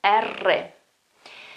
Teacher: Well, that sound that is almost vibrating, okay, it's you can hear the top of my tongue vibrating, okay, on the top of my mouth, R. This is the correct pronunciation. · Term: R sound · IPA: /ERRE/